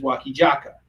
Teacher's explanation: the koreans they don't have a z sound they have a j sound so anytime they see a z they just pronounce it with